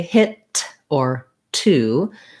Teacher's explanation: when i say hit or two i have to close off the air and then let it go